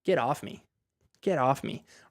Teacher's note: normally we wouldn't even pronounce of in that sentence l so we would say get off me get off me